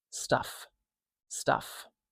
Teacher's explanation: So we don't say the F extra long. We just say it like a regular length.